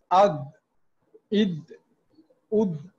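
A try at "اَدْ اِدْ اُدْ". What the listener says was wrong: তো দালের মতো কলকলার মতো হইতেছে, যেমন আদ,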